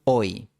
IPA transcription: oj